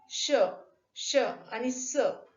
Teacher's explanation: तोंडात हवा अडवली गेल्यानंतर ती हवा जिभेच्या दोन्ही कडांना घासत बाहेर पडते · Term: घर्षक व्यंजन